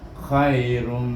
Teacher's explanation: Tetapi perhatikan selepas tanwin ini, tanwin baris hadapan ini bertemu dengan huruf mim, maka hukumnya idgham ma'al gunah, dibacakan tanwin ini dengan diidghamkan dengan huruf mim, bunyinya khairum, lebih bunyi mim. Khairum. Ra tu macam ada satu bunyinya.